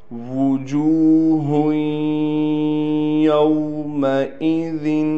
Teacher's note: یہاں پر واو کو ہم نے صاف طور پر نکالنا ہے، ہونٹوں کو ہم نے بالکل گول کر دیں گے۔ اگر ہونٹوں کو گول نہ کیا اور ہم نے ایسے ہی اس کو پڑھا تو شاید یہ حمزہ بن جائے، تو ہونٹوں کو گول کر کے واو کو ہم پڑھیں گے۔